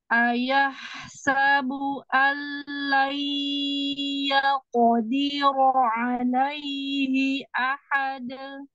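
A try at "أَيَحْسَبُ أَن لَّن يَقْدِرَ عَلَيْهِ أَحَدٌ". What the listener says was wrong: Naikin kofnya. Naikin yaqo.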